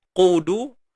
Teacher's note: Qudu. Qu tebal, du nipis. Cuma dua-dua ni kena muncung sebab dia baris depan.